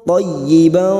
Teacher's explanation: masuk pada huruf ya yang bertasdid hanya masuk tanpa mendengung, tanpa ditahan lama-lama